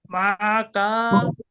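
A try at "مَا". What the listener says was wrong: কা টান হবে না, মা কা মা কুমা।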